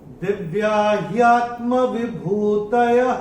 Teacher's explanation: दूसरे चरण में चरण की समाप्ति पे जो विसर्ग आ रहा है उसका उच्चारण केवल और केवल ह ही होगा।